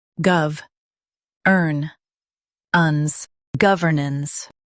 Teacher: Emphasize gov and keep ernance soft.